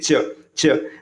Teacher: स्पर्श करता है ठीक है आप बोल के देखिए च च जैसे ही च बोलेंगे ना आपका जीभ क्या होगा ऊपर तालू को स्पर्श करेगा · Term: तालव्य व्यंजन